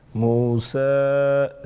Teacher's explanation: سین کے اوپر کھڑی حرکت ساتھ میں چھوٹا مد، 2 سے 3 الف کے برابر کھینچ سکتے ہیں